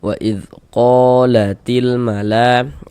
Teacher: Jadi ini ada alif sebelah kanan alif sebelah sininya nih ada huruf yang memiliki harakat fathah nih tanda baca fathah maka huruf tersebut dibaca panjangnya qo dibaca panjang mad thobi'i panjangnya dua harakat